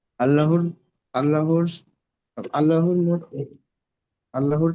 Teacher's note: আল্লাহর শব্দের পূর্বে যাবার এসছে, তাই আল্লাহর লামকে পুর করে পড়তে হবে। তারপরে লামের উপর তাজদিদ এসছে, না তাজদিদ লামের উপর, অক্ষরকে আর লামের উপরে তাসদিদ বলতে হবে না, এবারে বলবেন লামের উপরে খাড়া যাবার এসছে, খাড়া যাবার সমান আলিফ মাদ্দা।